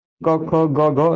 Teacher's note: क वर्ग में जितने भी वर्ण आते हैं सबका उच्चारण स्थान क्या होगा, कंठ ही होगा। क ख ग घ सब कंठ से ही बोले जाएंगे।